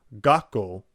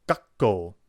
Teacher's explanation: Notice that it wasn't gako, it's gako. There's a real emphasis on the k sound following the small tou character. If written in Romai, it will likely just show two of the same consonant following each other. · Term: double consonant